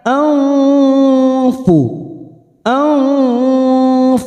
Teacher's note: nun sukun bertemu fa, ikfa hakiki, siap masuk ke huruf fa, bibir kita siap membentuk huruf fa, kita samarkan 3 harokat